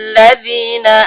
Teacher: Zal, ujung lidah bertemu dengan ujung gigi seri atas.